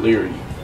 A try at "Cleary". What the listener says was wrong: It's pronounced Gastrocnemius, and my name is pronounced Cleary. Your name. You pronounce the C.